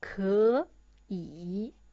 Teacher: It's too tiring to pronounce, so we change the first 可 into second tone